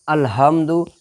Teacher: اگر چھوٹی ہا بولیں گے الحمد، سینہ کی طرف سے ہا نکالیں گے، اقصائے حلق والا جو ہا ہے وہ چھوٹی ہا ہوتا ہے، جو کہ سینہ کی طرف سے نکلتا ہے